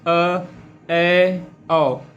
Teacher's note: अर्ध विवृत जिसमें आपका आधा मुंह खुलता है